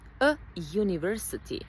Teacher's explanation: Iako se piše sa u, university, a u je samoglasnik, izgovaramo ga sa j, a university, a j je suglasnik, zato a plus suglasnik, ok?